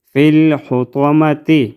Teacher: طا کو ہم موٹا پڑھیں گے مستعلیہ حروف میں سے ہے اس کو ہم موٹا ادا کریں گے